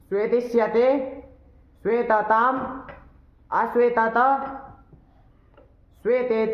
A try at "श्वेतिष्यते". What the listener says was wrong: बहुत सुंदर,